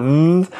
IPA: ð